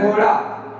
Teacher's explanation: जो जीभ की नोक होती है उस ताल को छूकर झटके से नीचे आती है। यानी जो जीवा का जो नुकीला भाग होता है, जो आगे वाला भाग होता है, ताल के मुख के ताल को छूकर झटके से बाहर आती है। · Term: उत्क्षिप्त व्यंजन